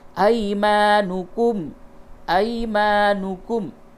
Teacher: یا ساکن سے قبل زبر ہے، یہ یا لین ہے، نرمی کے ساتھ اس کو پڑھیں گے اور یہ الف مدہ ہے. ایمانکم، ایمانکم، ایمانکم غلط ہو جائے